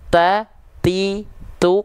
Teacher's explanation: tak berharakat itu percikan nafasnya kurang terasa berbed beda halnya ketika tak sukun at it UT tapi ketika